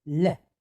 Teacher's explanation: We have a lamed, makes an L sound. We have the shva. Since it's at the beginning of a word, it gives us a quick E.